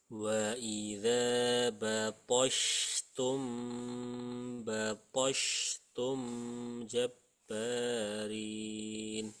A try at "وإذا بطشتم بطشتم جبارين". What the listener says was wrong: jadi mem sukunnya kelebihan sedikit, bilang.